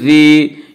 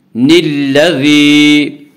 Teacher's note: ہمزۃ نون لام زیر نیل، لام زبر لا، ہمزۃ لمزۃ نلا، ذال یا زیر ذی، یا ساکن سے پہلے زیر ہے، یا مدہ ہوا، اور یا مدہ کو ایک الف کے برابر کھینچ کر پڑھیں گے